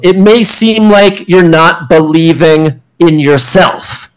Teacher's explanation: It's a falling tone instead of the rising tone. · Falling tone, conclusive statement.